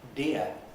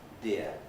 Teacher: a type of sound made by curling up the tongue so that the curled up point of the tongue is pointing towards the back of the mouth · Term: retroflex